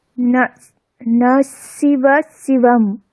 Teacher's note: স্যার, একটু দাঁতের কাছে লেগে যাচ্ছে জিভটা। তাই মানে এরকম শোনাচ্ছে, দন্তীয় স্বরই শোনাচ্ছে। আসলে তালব্য স আছে, মানে চ হ্যাঁ ছ স্যার।